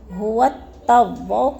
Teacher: هو التواب کو تا مشدد کے ساتھ سختی سے جماؤں کے ساتھ پڑھیں گے